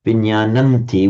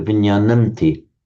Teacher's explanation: the final subdotted M assimilates to the following t sound, which is a dental, so the m changes to a n, which is the nasal corresponding to t